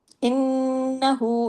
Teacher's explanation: نون پہ تشدید کی وجہ سے بڑا غنہ کیجیے